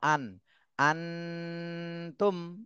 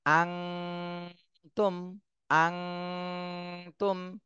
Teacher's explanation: আন আনতুম এভাবে পড়তেছেন তাহলে এভাবে পড়লে কিন্তু ভুল হয়ে যাবে দন্তন্য মতো পড়া যাবে না অনুস্বরের মত পড়তে হবে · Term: ইকফা গুন্না